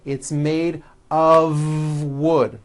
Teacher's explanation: It's not wood with an unvoiced F. It's all voiced and it's all connected.